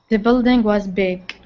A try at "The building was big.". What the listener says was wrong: Now you're back to the K sound. So this is what I want you to do. I want you to say the G. I want you to say g, g, g, g.